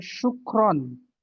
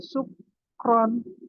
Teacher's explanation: Ya, itu dengan shin. Ada yang mengucapkan dengan sin